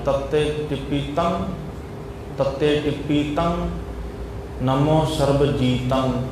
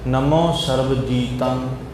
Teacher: ਗਗੇ ਦੀ ਆਵਾਜ਼ ਨਾ ਆਵੇ ਨੱਕ ਦੇ ਵਿੱਚੋਂ ਧੁਨੀ ਆਉਣੀ ਚਾਹੀਦੀ ਹੈ ਮੁੱਖ ਅਤੇ ਨੱਕ ਦੇ ਵਿੱਚੋਂ ਇਕੱਠੀ ਆਵਾਜ਼ ਆਵੇ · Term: ਨੱਕ ਚੋਂ ਆਵਾਜ